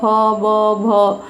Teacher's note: इनमें सभी में आपके ध्वनि निकलते समय दोनों ओष्ठ से ध्वनि टकरा रही है